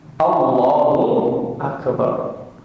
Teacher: Oh, Allah tipis a-nya. Istifal ke bawah lidahnya, nggak boleh naik ke atas. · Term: tarqiq